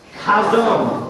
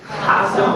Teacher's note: you need to kind of make a guttural sound when you say it it's kind of like when you clear your throat